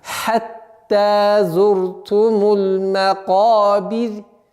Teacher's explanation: Вот в данном случае ра, огласовка аннулируется над буквой ра, а вот буква ра сама подчиняется впереди стоящей огласовке кесра. И таким образом получается мягкий звук.